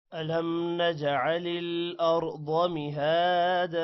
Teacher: جیم پر قلقلہ ہوگا، یہاں پر کسی بھی آپ نے ورڈ کو لمبا نہیں کرنا۔